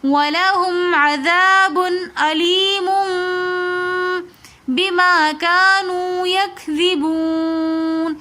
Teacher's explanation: دو پیش کی تنوین کے بعد با آ رہی ہے تو اس لیے ہم دو پیش کی تنوین کی آواز کو میم کے ساتھ بدل کر پڑھیں گے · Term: اقلاب